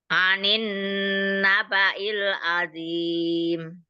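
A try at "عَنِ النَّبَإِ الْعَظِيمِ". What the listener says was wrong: Tapi zo-nya kurang tebel coba. Azim, azim. zo.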